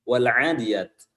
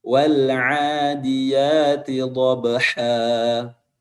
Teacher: Namun huruf ain itu wasatul halq, pertengahan tenggorokan itu rapat. Jadi yang timbul huruf ain.